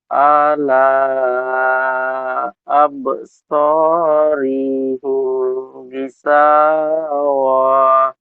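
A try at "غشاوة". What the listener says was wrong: ও যদি ছেড়ে দিই তো গিসা ওহ, ওটা একটু টান মতো হয়ে যাচ্ছে।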